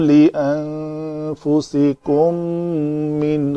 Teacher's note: میم ساکن کے بعد میم ہے تو ادغام شفوی ہے